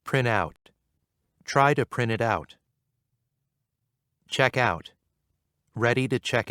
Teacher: two word verbs are often stressed on the second word